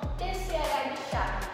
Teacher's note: clusiva seguida de uma aplicativa os exemplos são tch de chave começa com o bloqueio da língua no céu da boca e depois o ar é liberado com flexão esse TC H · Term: africadas